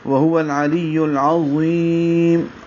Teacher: عظیم پڑھتے ہیں، یا زا پڑھتے ہیں، یا زال پڑھتے ہیں، عظیم نہیں ہے، ضا پر ہوتا ہے، موٹا کریں گے ، وہو العلی العظیم، اور یا باریک پڑھیں گے اور میم